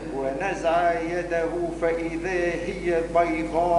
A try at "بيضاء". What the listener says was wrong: مش بيضة.